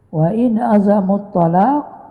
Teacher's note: nun mati bertemu dengan ain izhar halqi